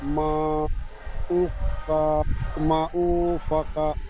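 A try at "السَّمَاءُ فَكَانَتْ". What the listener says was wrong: মা মিম টান হবে, উ টান হবে না। হামজি আপনার হামজাটি টান দিচ্ছেন। সামা, শুধু মাটি আলাদা পড়বেন না, সামা বলেন।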